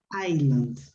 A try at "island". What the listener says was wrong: S is not pronounced. Go on, please.